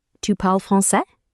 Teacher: Simply raise your voice at the end. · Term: intonation